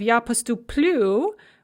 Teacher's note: So we have я поступлю with the stress on the end, just like it is in the infinitive.